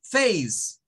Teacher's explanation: el sonido ei le pertenece a la vocal a es el sonido largo